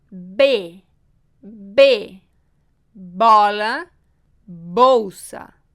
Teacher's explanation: juntamos os lábios e fazemos uma explosão.